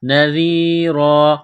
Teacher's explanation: ذال کو باریک کرنا ہے زبان تھوڑی سی باہر نکالیں گے ذال کو پڑھتے وقت